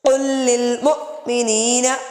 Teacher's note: قاف موٹا ہے، حمزہ پہ جھٹکا ہے